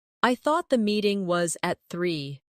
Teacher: Do you hear the soft connection between meeting and was?